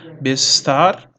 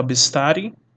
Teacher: E o pronome do sufixo yud, ele não é pronunciado.